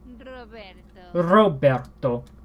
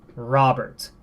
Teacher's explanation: The R gets trilled, which is that little motory sound